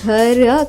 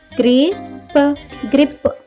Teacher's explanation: జిఆర్ యొక్క శబ్దం ఘర్ కాకుండా గ్ర అవుతుంది. జిఆర్ఐ యొక్క శబ్దం గ్రీ అవుతుంది.